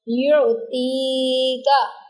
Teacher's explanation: अलकाफिरीन, री को भी लंबा कर दिया क्योंकि या साकिना है और उससे पहले ज़ेर आ गई तो इसको हम लंबा करेंगे। युतीका, यहाँ पर हमने ती को लंबा किया क्योंकि या साकिना है और उससे पहले तो के नीचे ज़ेर है